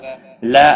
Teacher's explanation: لا الف مدہ ہے، ایک الف کے برابر کھینچ کر پڑھیں گے۔